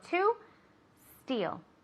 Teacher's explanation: a lot of students like to put the e in front but there's no e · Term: no imaginary e